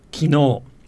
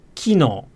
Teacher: in osaka it's kino with the accent on the key · the word for yesterday in standard Japanese is kino, with the accent on the no. But I believe in Osaka it's kino with the accent on the ki.